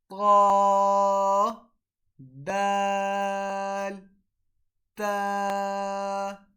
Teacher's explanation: ता दाल ता को अदा करने का तरीक़ा यह है, जब हमारी ज़बान की नोक हमारे सामने वाले 2 दांतों की जड़ से जाके लगती है, तो ता दाल और ता अदा होती है